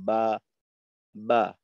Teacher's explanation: জিহ্বাটা একেবারে নিচু থাকে, জিহ্বার কোনো অংশ উপরের দিকে ওঠে না, বলা চাইতে পারে মুখের খালি জায়গা ব্যবহার হয় এবং ঠোঁটের অবস্থা থাকে খোলা। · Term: জবরের মাখরাজ